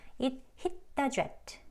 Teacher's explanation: hit, 트 소리 또 hit, 읏에서 멈춥니다. stop, t요. 멈춰지는 거죠.